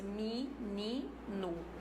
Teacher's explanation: todas as vogais da palavra ficam harmonizadas no caso aqui Harmonia foi na altura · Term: Harmonia vocálica